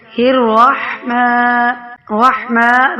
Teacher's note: را جو ہے موٹا پڑھیں گے، را کے اوپر زبر ہے، ح کو ساکن کو کھینچ کر ادا کریں گے۔